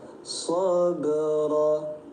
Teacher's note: Huruf ba sukun di tengah bacaan disebutnya qalqalah sugra. Pantulkan bunyi ba